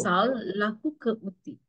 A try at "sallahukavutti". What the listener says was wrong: Sal, lahuka, one word.